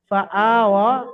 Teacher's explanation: ইয়াটা লেখায় এসছে, পড়ায় আসবে না, ইয়াটা পড়ার মধ্যে বাদ যাবে, ইয়াটা বাদ দিয়ে পড়তে হবে।